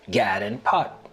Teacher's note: The lot trap vowels are reversed for God and pat to sound like gad and pot.